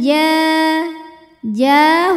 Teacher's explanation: qari Afa hukmal ja ja hukumnya adalah Mad Thobi'i ziri sebab ada Alif didahului harakat fathah maka huruf Jim panjang dua harakat